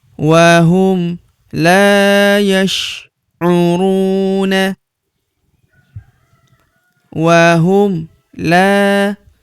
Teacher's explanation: huruf la kita panjangkan 2 harokat karena terdapat tanda alif di depannya